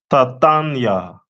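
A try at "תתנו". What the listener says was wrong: Close. The last letter.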